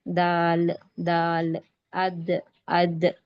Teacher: जबान की नोक और ऊपर दांतों की जड़ यानी जबान की नोक ऊपर दांतों की जड़ को जब मिलती है तब दाल का मखरज अदा होता दाल की आवाज पैदा होती और दाल को बारीक खींच के पढ़ेंगे दाल दाल अद अ ऐसे दाल का मखरज क्या है दोबारा तीनों और ऊपर दांतों की जड़ और ऊपर दांतों की जड़ जड़ इसी तरह से जी इससे पहले ये मखरज किस हर्फ का पढ़े थे हम? · دال کو باریک کھینچ کے پڑھیں گے